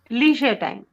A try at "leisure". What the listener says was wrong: It's not leisure, it's leisure. A sound, leisure. We write E, we say A. Leisure time.